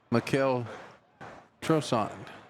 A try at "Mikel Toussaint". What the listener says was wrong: There's no R in it. Mikel Toussaint.